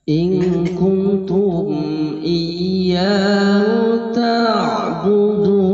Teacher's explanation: mad arid lis sukun bacaana sepanjang-panjangna sampai 6 harokat 1 2 3 4 5 6 ketika ada huruf yang diberhentikan